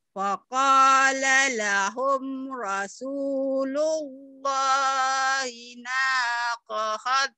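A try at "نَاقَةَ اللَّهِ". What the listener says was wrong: Bukan kohot, nakotau itu tak marbutoh. Nakotau. Faqala lahum Rasulullahi naqatallahi wa suqyaha.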